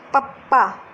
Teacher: ਦੋ ਹੋਂਠੀ ਨੇ ਆਪਣੇ ਦੋਨੇ ਹੋਂਠਾਂ ਦੇ ਨਾਲ ਬੋਲੇ ਜਾਂਦੇ, ਦੋਨੇ ਬੁੱਲਾਂ ਦੇ ਨਾਲ ਬੋਲੇ ਜਾਂਦੇ ਆ।